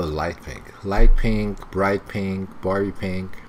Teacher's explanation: The voice rising to show that the list is not finished yet. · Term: intonation